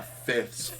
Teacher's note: you've got the F, then the TH, and then the S. All together, no vowels, just a mash of consonants.